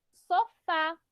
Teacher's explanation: A sílaba tônica é o fá